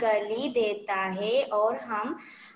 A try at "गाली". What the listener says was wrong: My dear, pronunciation देखिए, it's not गली, गली means street, it is गाली, okay गाली, okay read.